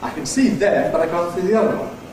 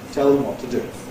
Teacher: A weak form /ðəm/ with a weak vowel /ə/